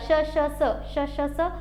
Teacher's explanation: उष्मे किंवा घर्षके या वर्णांचा उच्चार करताना घर्षण होतं, घर्षण निर्माण होतं. जसं की बघा श श स, श श स, असं वाटते की घर्षण निर्माण होते आतमध्ये घशामध्ये आणि घर्षण निर्माण होऊन उष्णता तयार झाल्यासारखी वाटते, त्यामुळे त्यांना उष्मे किंवा घर्षके असं म्हटलं जातं.